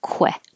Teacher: remember to round your lips because it's a KW,